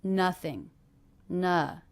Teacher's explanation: ING endings, even though this isn't an ING verb, will be unstressed.